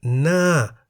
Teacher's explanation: The tone mark Mai To is written above the second consonant No Nu, but it is the first consonant Ho Heb which determines the tone even as Ho Heb is silent in this case. As Ho Heb is a high-class consonant, the word Na, meaning face, is in the falling tone.